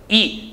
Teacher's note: 우리 이라고 하는 발음을 한번 해보자고요. 혀의 앞에서 소리가 시작한다는 걸 느낄 수가 있다는 겁니다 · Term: 전설모음